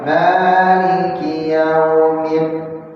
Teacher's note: Enggak ada hamsnya, enggak ada anginnya. Jadi dalnya benar-benar bulat.